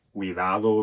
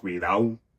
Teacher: the deletion of intervocalic or word-final /d /